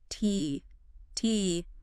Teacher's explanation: it's an unvoiced sound. That means uh your vocal cords aren't vibrating when you say it. Okay. Unvoiced. · you place the tip of your tongue just behind your upper teeth. Right behind the teeth. Okay. And then you release like a little puff of air.